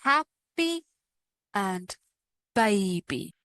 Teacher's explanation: When we have the letter Y at the end of a longer word, it sounds like E, almost the same as the long E sound. It acts like a vowel here, and we find this in words like happy and baby.